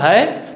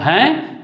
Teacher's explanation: जब बोल रहा हूँ है तो सिर्फ हवा मुंह से निकल रही है, और जब बोल रहा हूँ हैं तब वह नाक और मुंह दोनों से निकल रही है